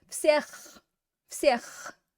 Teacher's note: it's got that throat clearing sound on the end